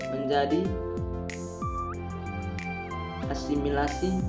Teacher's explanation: prefix at merubah menjadi as sebelum bunyi S pada asimilasi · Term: asimilasi regresif